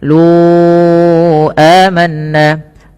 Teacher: panjangkan huruf lu sepanjang 4 harakat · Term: mad jaiz munfasil